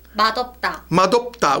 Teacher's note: Notice that it's 맛없다 the siot is kind of silent there.